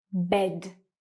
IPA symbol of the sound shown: e